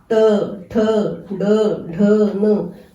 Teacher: जो हमारी जीभ है थोड़ी उल्टी हो जाती है और ऊपर तालु से लगती है, इसे मूर्धा कहा जाता है। तो मूर्धा, इसे मूर्धा वाले उच्चारण स्थान से प्रयोग होते हैं।